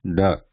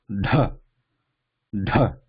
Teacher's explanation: that curving ridge in the mouth top part and tip of the tongue slightly curved backwards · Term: cerebral